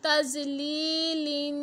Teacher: ता ज़बर ज़ुआ साकिन तज़ लाम ज़ेर या साकिन ली तज़ली लाम दो ज़ेर लिन तज़लीलिन। या से पहले ज़ेर है तो हरूफ़ मद्दा है, एक अलिफ की मिक़दार तक खींच कर पढ़ेंगे